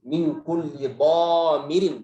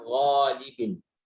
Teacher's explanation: Beda dengan dhamirin. Dhamirin lebih tebal. Kenapa? Karena dia punya sifat isti'la, punya sifat itbaq.